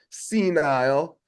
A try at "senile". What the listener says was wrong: Senile. There's an L in there. Senile. You're not saying an L, but that's okay.